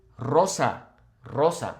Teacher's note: whenever a word in Spanish starts with a singular R, we will roll it